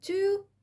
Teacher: too آخر sound في كلمة too sound أهو الشفايف فيه إيه؟ rounded مضمومة كده